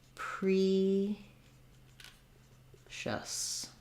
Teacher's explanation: we have the schwa for the final syllable